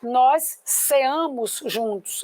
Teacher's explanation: Eu não ponho força no CE. Eu não ponho força no A e S.